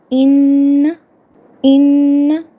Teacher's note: خیشوم کہتے ہیں ناک کے بانسے کو، اور یہ غنہ کا مخرج ہے، جیسے ان، ان، تو یہ ناک سے جو آواز ادا ہو رہی ہے اسے غنہ کہتے ہیں